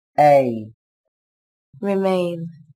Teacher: Từ này có chứa nguyên âm A. Các bạn lưu ý đọc âm E nối với âm I. Âm E dài hơn âm I một chút là được nhé.